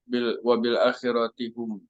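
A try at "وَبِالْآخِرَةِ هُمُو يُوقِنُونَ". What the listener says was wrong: Wabil akhirati humu yuqinun ya, seperti itu bacanya. Humu. Bukan dibaca wabil akhirati hum yuqinun, tapi wabil akhirati humu yuqinun.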